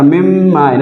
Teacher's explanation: اسی طرح مم مائن، اصل میں ہے من مائن، نون میم سے بدل گیا اور میم کا میم میں ادغام ہو گیا، ٹھیک ہے. تو اب یہ نون جو ہے نہیں پڑھا جاتا، میم ہی پڑھا جاتا ہے. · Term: ادغام مع الغنہ